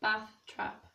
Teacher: Geordie doesn't have the bath trap split